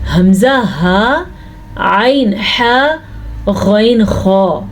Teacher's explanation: وہ اس صورت میں ظاہر کیا جاتا ہے جب نون ساکن یا تنوین کے بعد حروف حلقی، حروف حلقی کہتے ہیں ان 6 حروف کو جو حلق سے نکلتے ہیں، یعنی جو گلے سے نکلتے ہیں